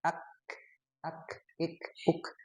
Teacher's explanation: Sedangkan huruf kaf, nah dia ada hamsnya ya. · Jadi tertahan ya tidak keluar. Jadi dengan kaf dia syiddah tapi di akhirnya ada hamas.